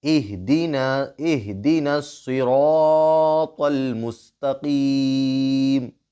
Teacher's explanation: ہمزت اللمزت الذی اہدنا الصراط المستقیم، یہاں پر قاف پر ہوگا، یہاں پر طا پر ہوگا، اور یہاں پر صاد بھی پر کریں گے، صاد ہونٹ گول کر کے صاد بولیں گے